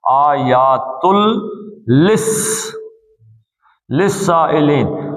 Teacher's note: نون اڑ گیا اور سیدھا لام میں